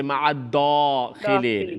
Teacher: you're making the non-full mouth letters a full mouth, a heavy sound